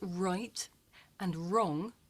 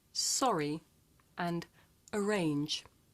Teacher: Now watch my mouth while I'm saying this sound. My lips come out and I pull my tongue back.